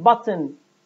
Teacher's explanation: Remember that stop sounds are oral sounds, and in the production of oral sound, the airstream leaves through the mouth. However, when a stop sound is followed by a nasal sound, now the release of air occurs from the nose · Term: nasal explosion